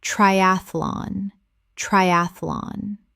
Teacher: Three syllables in natural speech. The middle syllable collapses.